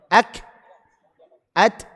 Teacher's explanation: Kita tahu bahwa dia punya sifat syidah kan. Tekanan di makhrajnya kuat. Jadi antum tekan kemudian mengalir nafasnya artinya dia bocor secara otomatis.